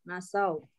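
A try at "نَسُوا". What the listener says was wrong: Nasia, nasia, nasu, bukan nasau dia.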